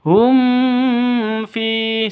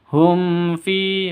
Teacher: mim mati bertemu dengan fa, jelas, terang, tidak boleh didengungkan ya. Tidak boleh didengungkan, tidak boleh dipanjangkan.